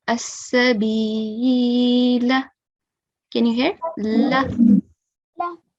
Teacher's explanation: When I recite it in continuation, I'll only prolong the lam for 1 second. I will drop the alif out of the pronunciation. Okay, I will treat it as a excessive alif.